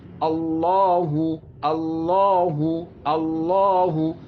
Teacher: আল্লাহ যখন বলবেন তখন কিন্তু ঠোঁট গোল হবে না। যখন হুটা উচ্চারণ করবেন তখন ঠোঁটটা আবার গোল হবে।